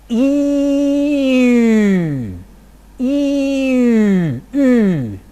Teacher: I first produce cardinal number 1, E, and then I round my lips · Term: rounded front vowel